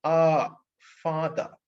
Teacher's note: remember this sound very carefully there is no lip rounding